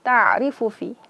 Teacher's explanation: Huruf ain dia bainiyah, bukan rakhawah, bukan syiddah. Bukan tertahan suara, bukan mengalir suara.